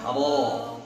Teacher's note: Nah sekarang ro, mundur lagi di sini, ro ya, huruf ro. Karena dia tebal, saat dia fathah maka dinaikkan pangkal lidah kita. Jadi menebalkan huruf itu dengan cara menaikkan pangkal lidah.